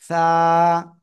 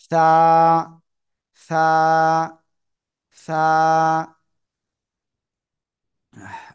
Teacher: জিহ্বার আগা, উপরের 2 দাঁতের আগায় লাগাবেন, লাগিয়ে নরম আওয়াজে আপনাদের উচ্চারণ করতে হবে।